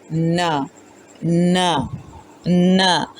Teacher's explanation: نون کی ساؤنڈ ہے نا، نا، نا۔ زبان کی نوک اور اس کے مقابل سامنے کے دو دانتوں کے مسوڑے سے ادا ہو رہا ہے۔